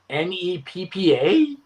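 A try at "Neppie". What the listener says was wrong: I-E. Neppy. Neppy. Neppy.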